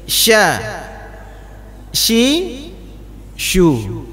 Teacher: Huruf shin ini mulut kita baru monyong ketika shu. Tapi ketika membaca sya, mulutnya terbuka, tidak perlu sya.